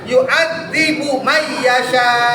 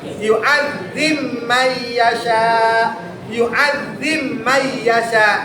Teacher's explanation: Jadi bnya itu hilang dimasukin ke mim. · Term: diidgamkan